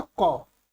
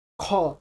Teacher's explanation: क जो है वो अल्प प्राण है लेकिन ख महाप्राण है। जैसे क बोलते हैं तो क, ख, ख में आपको ज्यादा जोर लगाना पड़ता है और मुख से ज्यादा वायु निकलता है तो वो महाप्राण में आ जाएगा।